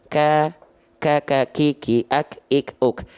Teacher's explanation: Hams yang tadi kita sebut adalah mengalirnya nafas. Tapi untuk huruf kaf dan huruf ta itu hanya berupa percikan nafas saja.